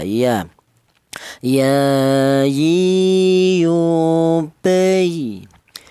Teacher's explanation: Untuk huruf ya, keluarnya huruf berasal dari tengah lidah